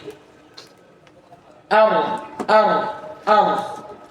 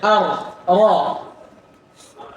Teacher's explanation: Karena takrir itu sifat. Takrir itu apa? Getaran. Pada saat pengucapan huruf, dan ini sifat khusus pada ra. Tidak ada huruf yang lain.